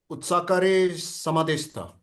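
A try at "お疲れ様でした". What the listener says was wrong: Otsukare sama deshita. It's su. Otsukare sama deshita.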